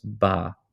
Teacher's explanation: the diphthong such as I was reduced to a, as in by, they would say just ba, right?